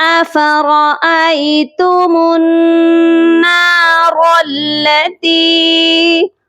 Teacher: أفرأيتم، را کو بھی موٹا کر کے پڑھا جائے گا، اور میم کو نون مشدد کے ساتھ ملائیں گے تو غنہ کر کے ملائیں گے · درمیان میں الف اور لام خالی حروف ہیں، جس کے اوپر کوئی حرکت نہیں ہے، اسی لیے ہم ان کو نہیں پڑھیں گے